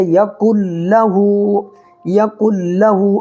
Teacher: لام اور را کی صورت میں ادغام بلا گنہ کر کے پڑھیں گے